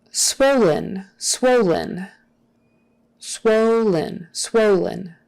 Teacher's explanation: with the accent on the first syllable. And that final en is typically pronounced, it could be in or n, don't pronounce it in.